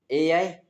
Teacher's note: ए और आई है ये कंठ और तालु दोनों से बोले जाते हैं।